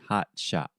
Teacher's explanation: So, most of the time, if I'm speaking normally in a conversation with my friends, I say hot shot. So, in the first T sound, I'm using what we call a stop T.